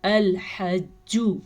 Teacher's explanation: جیم کے اوپر شد ہے تو کلکلا جھٹکے کی کیفیت اس لیے ہوگی کیونکہ شد کے اندر اصل میں 2 حروف ہوتے ہیں ایک جیسے، یعنی کہ اس شد میں 2 جیم ہیں۔